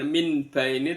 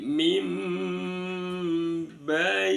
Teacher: isyarat nunnya dirubah berubah menjadi mim, namanya bacaan iqlab. Min jadi bukan min bai ini tapi mim bai.